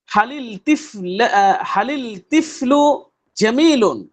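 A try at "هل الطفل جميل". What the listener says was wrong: হালিল হবে না, রূপে শামসিয়া, হালিদ তিফলু।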